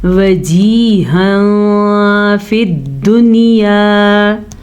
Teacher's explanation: تنوین کے بعد حروف اخفا میں سے فا آیا ہوا ہے تو ہم تنوین کو چھپا کے پڑھیں گے اور غننے کے ساتھ پڑھیں گے، اسے کہتے ہیں اخفا کا قاعدہ۔